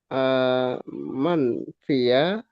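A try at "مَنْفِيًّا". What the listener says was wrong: Nah, pakai tasydid manfiyan.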